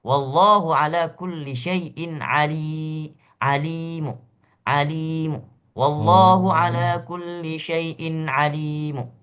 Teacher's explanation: kita boleh mewakafnya hanya dua harakat saja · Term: raum